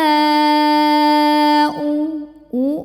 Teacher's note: u monyong keluarnya dari tenggorokan bagian bawah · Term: Hamzah